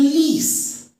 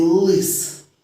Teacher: в слові ліс л звучить дуже м'яко а в слові лис ні